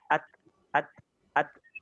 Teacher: Hams itu berhubungan dengan udara. Jadi ketika ta itu keadaan sukun, ada udara yang keluar, tapi tidak udara yang dibuat-buat ya. Ini udara natural. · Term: sifat hams